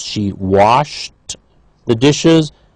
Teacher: both of them voiceless because drop voiceless wash voiceless